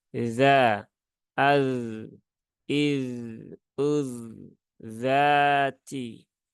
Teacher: pastikan huruf dalal itu di ujung lidah gigi seri atas